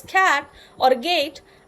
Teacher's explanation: are produced by raising the back of the tongue against the soft palate. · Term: velar